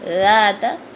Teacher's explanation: سختی سے سیٹی کی آواز نہیں آنی چاہیے، دونوں دانتوں کے درمیان زبان کا کنارہ لا کے، تو ہم نے کیا کرنا ہے، اس کو نرمی سے بولنا ہے۔